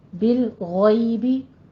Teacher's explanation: اسی طرح بالغیبی نہیں کہنا، بالغیبی. بالغیبی، غیم کو آپ نے پور پڑھنا ہے اور یا لین ادا کرنی ہے آگے